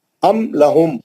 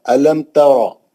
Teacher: ام لہم لام آ گیا, جلدی پڑھیں. میم ساکن کے بعد حرف لام آیا, اظہار شفی ہو گیا. بغیر غننے کے میم کو ظاہر کریں گے.